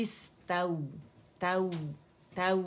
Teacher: complete rolling of lips on wow